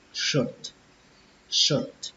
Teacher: Và âm cuối cùng nó bắt đầu bằng chữ ch nhưng cách đọc của chúng ta là âm sờ, kết thúc bằng âm t bạn ơi